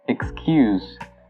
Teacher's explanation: So the U is pronounced longer, and the S is now pronounced as a Z.